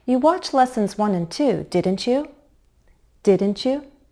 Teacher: Because we have a verb and a pronoun, we have more than one syllable to work with. So when we rise on a tag question, we step up in pitch. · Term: Rising intonation